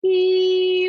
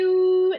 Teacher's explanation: the oo sounds so much lower, doesn't it? And that's because the oo is boosting the lower frequencies